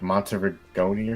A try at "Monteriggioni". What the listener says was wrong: I think it's soft G, Monteriggioni.